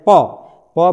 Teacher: लिप जो है आपका जिन व्यंजन के उच्चारण में दोनों ओठों द्वारा श्वास का अवरोध अवरोध मतलब रोका जाता है थोड़ा देर के लिए होता है उसे ओट व्यंजन कहलाता है